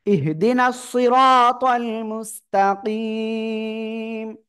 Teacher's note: অক্ফ করলে মিম সাকিন, তখন তিন আলিফ টান হবে এখানে